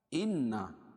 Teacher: إنا نون مشدد اور میم مشدد غنہ ہوتا ہے، اس میں الف سے پہلے نون کے اوپر زبر ہے تو یہ الف مدہ ہو جائے گا.